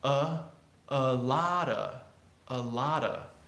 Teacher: A lotta people, if you still have an accent and you're just changing the whole a to a Spanish a, it won't work. The unstressed syllables change and they become more neutral, they become more, it gets different from Spanish vowels.